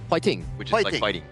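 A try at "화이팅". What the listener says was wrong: like like fighting but with a h.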